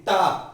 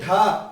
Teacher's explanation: जब आप बोलेंगे टा तो टा पे जीवा ऊपर को जाएगी। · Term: मूर्धन्य